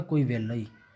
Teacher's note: ਮਤਲਬ ਜਦੋਂ ਕਿਸੇ ਸ਼ਬਦ ਦੇ ਵਿੱਚ ਰਾਰਾ ਲੱਲਾ ਆ ਜਾਵੇ ਇਕੱਠਾ, ਇਸ ਨੂੰ ਉਚਾਰਨ ਵੇਲੇ ਲੱਲਾ ਹੀ ਉਚਾਰ ਦਿੱਤਾ ਜਾਂਦਾ। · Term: ਵਿਅੰਜਨ ਗੁੱਛਾ